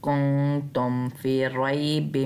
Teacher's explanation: نون غنہ کی آواز نکالنی ہے، نون کی آواز نہیں نکالنی